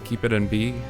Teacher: "keep it in B," and that had a really nice rhythmic feel, along with just like a beat and with a really nice, that bilabial percussive B sound worked really well as a sample for percussion